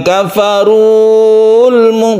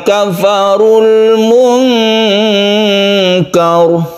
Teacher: al itu menyebabkan huruf yang panjang itu menjadi pendek